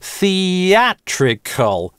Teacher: thee - это тоже /iː/, дальше /æ/, связываются они через linking [j]